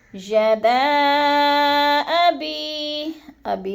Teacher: یدا پہ جو ہے مد منفصل ہے، حروف مدہ کے بعد حمزہ دوسرے کلمے میں آ گیا ہے، تو ادھر مد منفصل 4 الفی مد ہے، 4 حرکات کے برابر ہم نے اس کو کھینچنا ہے۔ جیسے یدا ابی کو بھی لمبا کر جانا ہے کیونکہ ادھر یا مدہ ہے۔